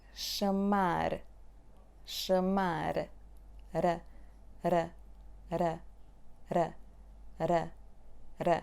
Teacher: when you say batter, batter, the tip of your tongue is just flapping the upper palate. · to articulate the front sound R in European Portuguese, you need to touch the upper hard palates with the tip of your tongue. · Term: flap sound T